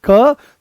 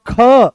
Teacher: जिनका उच्चारण पेट से होता है। तो जैसे ही आप बोलोगे क तो बड़ी सरलता से निकल आया। पर जैसे ही बोलते हो आप ख तो जोर लगाना पड़ा। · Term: महाप्राण